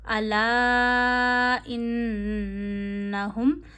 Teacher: अब देखिए फिर से अलिफ मद्दा पे मद है, मद से आगे हमज़ा है, अलिफ पे कुछ भी आए वो हमज़ा बन जाता है। जब मद से आगे हमज़ा हो तो मद को आप कितना खींचते हैं, 2 उंगलियों जितना